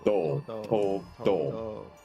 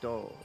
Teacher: So once you start getting into the vowel, right, >> you can feel your voice start to vibrate as you leave the T sound, >> right? >> Whereas with do it's vibrating the whole time.